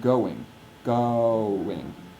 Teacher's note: change in the aperture of the mouth within the sound event in English o is a diphthong like we say I'm going going